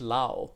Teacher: So the ra gets mapped to a la. Yeah. And that's because they're born in an environment where there's no need or there's no distinction between those kinds of syllables, right?